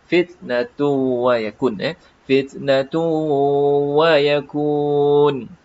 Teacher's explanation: sebutan huruf ta yang mati fitnatun fitnatun hanya kecil saja bunyi desiran